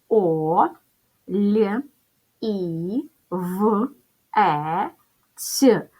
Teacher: ставимо наголос олівець наголос паде на третій склад називаємо приголосні звуки перший приголосний звук буде ль м'який тому що після букви Л стоїть буква і яка пом'якшує попередній приголосний наступний звук приголосний в твердий і третій приголосний звук ць м'який